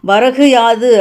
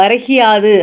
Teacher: முழுமையாக ஒரு மாத்திரை அளவில் ஒலிக்காமல் அரை மாத்திரை அளவாக குறைந்து ஒலிக்குது. ஸோ கூங்கிறது வந்து கீயா ஒலிக்குது அப்படின்னு வந்து சொல்கிறாங்க. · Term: குற்றிய லீகரம்